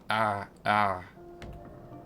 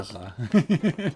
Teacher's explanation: It's almost like making the a sound but from your throat. Like from the back of your throat.